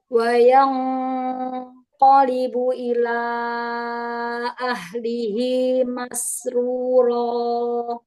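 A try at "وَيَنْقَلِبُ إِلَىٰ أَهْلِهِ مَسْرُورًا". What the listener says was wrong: Tebalkan ya. Kalau yang tebal tebalkan aja langsung aja pangkal lidahnya angkat ya.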